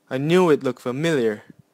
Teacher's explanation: I put stress on new and familiar